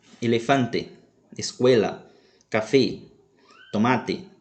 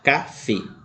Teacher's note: Observe que o som da letra E sempre será fechado, diferente da língua portuguesa, que apresenta som aberto e fechado. No espanhol, mesmo que a letra E receba o acento gráfico, tilde, ou acento agudo, como conhecemos no português, mesmo assim o som permanecerá fechado.